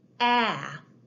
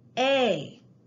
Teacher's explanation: the word pal has a short a sound ah and the word pale has a long a sound a